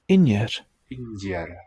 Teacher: So it palatalized to just a y.